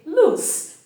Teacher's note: Therefore, when pronouncing the word L-O-O-S-E at the level of pronunciation, you say loose, meaning that towards the end of the pronunciation, the vocal cords won't vibrate